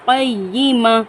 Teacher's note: یا پر تشدید ہے، قاف کو ہم یا کے ساتھ سختی سے ملائیں گے